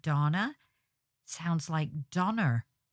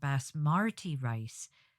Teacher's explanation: random R can fall at the end of a word that ends in a vowel like the name Donna sounds like Donner in the northern English accent